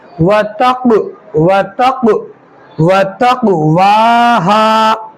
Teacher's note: قاف میں قلقلہ ہوگا کیونکہ قاف حروف قلقلہ میں سے ہے, اس کے اوپر جزم آ رہا ہے تو اس کی آواز پلٹ کر واپس آئے گی